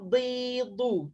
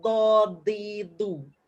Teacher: bila nak menyebut huruf dot, tepi lidah kena dengan geraham atas sama ada kiri atau kanan. Itu tempat keluar huruf dot yang sebenar.